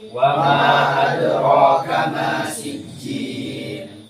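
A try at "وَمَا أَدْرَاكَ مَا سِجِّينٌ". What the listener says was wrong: Kenapa dibaca seperti itu, tidak panjang? Wa ma adraka ma sijjin. Majaiz munfasil. Isba. Qasr. Dibaca 2 harokat.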